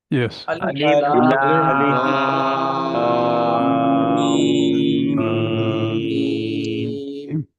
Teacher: جب میم مشدد ہو گیا تو لام کے بعد مجھے لام پہ رکنا نہیں ہے بلکہ غنہ کرنا ہے. اور غنہ کہتے ہیں تھوڑی دیر آواز کو خیشوم میں رکھنا.